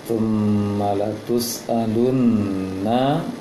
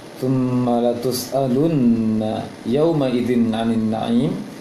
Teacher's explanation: Latus'alunna itu tadi tasydid nunnya yang ditahan lama, namun untuk harokat fathahnya tidak ditahan, tidak dipanjangkan.